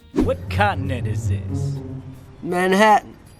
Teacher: This is actually how most Americans pronounce these two words. The traditional T sound becomes what we call a glottal T.